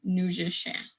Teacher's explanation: nasally sound and neutral is one of those words so um that ending you kind of gotta try and push it out of your nose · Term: nasalized sounds